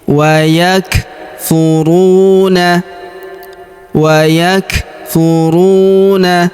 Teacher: Perhatikan huruf kaf berharakat sukun. Kita berikan hembusan tipis.